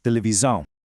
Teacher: And when it comes to ver televisão, watching TV, notice how the S in televisão is sandwiched right between two vowels? In European Portuguese, whenever an S sits between two vowels, it makes a really distinct Z sound.